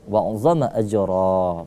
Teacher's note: Huruf jimnya kita pantulkan sedikit karena qalqala sughra.